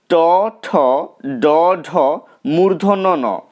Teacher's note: ট বর্গের অন্তর্গত বর্ণগুলো উচ্চারিত হয় মূর্ধা থেকে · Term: মূর্ধন্য ধ্বনি